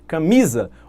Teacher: olha a tonicidade na penúltima sílaba, é uma palavra paroxítona